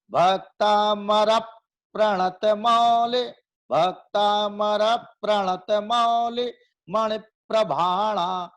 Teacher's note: जैसे मैं इसमें बताऊं आपको कि भक्तामर प्रणत, तो प्रा शब्द जो है संयुक्त है, प्रा पा और रा से बना है प्रा, ठीक है, प्रणत वाला प्रा, तो उसके पहले रा आ रहा है। भक्तामर का रा जो है प्रा के पहले आ रहा है, तो वो रा पर अपने को जोर देना है।